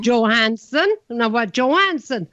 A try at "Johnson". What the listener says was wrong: Johansson, 3 syllables. Johnson, 2 syllables, and you have more trouble with that.